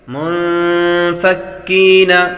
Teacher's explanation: نون ساکن کے بعد فا حروف اخفاء میں سے آ رہا ہے، غنہ کر کے پڑھیں گے۔